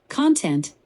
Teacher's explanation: Let me try again with your guidance. Content, with the emphasis on the first syllable, like the material or substance of something